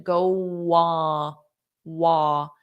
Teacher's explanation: Did you notice there was a little bit of a W?